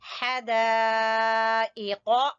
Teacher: हा को वस्ते हलक से और मद खींचेंगे, वही मद वाजिब जो पढ़ी है हमने, और कौफ जो है जबान की जड़ से।